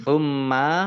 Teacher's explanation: mim tasdid dibaca gunnah atau mendengung, ditahan kurang lebih 2 harokat